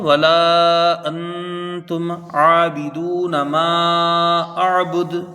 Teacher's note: حرف مد کے بعد حمزہ دوسرے کلمے میں 2 ڈھائی 4 الف تک اس کو کھینچ کر پڑھیں گے۔ انتم میں یہاں اخفاء حقیقی ہوگا، 1 الف مقدار غنہ کریں گے، اور تم یہاں اظہار شفوی ہوگا، میم کو ظاہر کر کے بغیر غنہ کے جلدی پڑھا جائے گا۔ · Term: مد منفصل